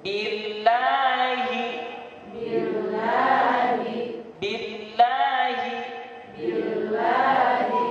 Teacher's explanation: Billahi. Di billahi di lamnya ada tasdid jadi dinabroh, ditekan.